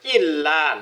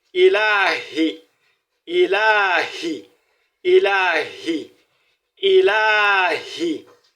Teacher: ilahi, à cause de cette voyelle longue, il faudrait tirer le la.